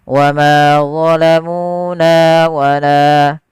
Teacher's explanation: Pada lafal ma, mu, na, la, keempat kata ini wajib sama panjangnya. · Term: mad tabi'i